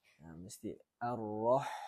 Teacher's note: Yang kedua, yang ketiga ialah huruf ha. Huruf ha ni mesti ada angin sikit.